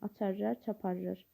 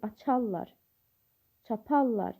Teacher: Amma vurğusu sonda olmayanda fel olur, açarlar, çaparlar. Yəni vurğu ikinci hecanın üzərində olur. Bu zaman isə yenə də qoşa samitlər olur.